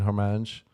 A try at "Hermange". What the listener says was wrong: I think you're saying her name wrong. I don't think you pronounced the H.